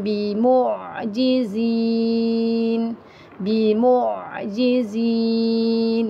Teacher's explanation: Lembutkan saja pada huruf ain tuan-puan, tetap di tengah-tengah kerongkong. Jangan bunyi dekat hidung. Bimu sempit sangat tu kan, jadi masukkan di tengah-tengah kerongkong.